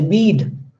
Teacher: when I say bead, then automatically I am lengthening it. Why? Because d sound is voiced sound.